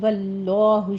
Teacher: واللہ میں لفظ جلالہ کو پر پڑھنا ہے کیونکہ اس سے پیچھے فتح آ رہی ہے